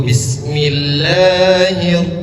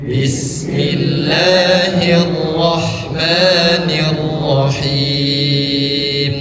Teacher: Bismillah 2 harkat saja, nggak perlu panjang, nggak perlu lebih daripada 2 harkat. Nggak perlu Bismillahir, itu sudah masuk 3 harkat.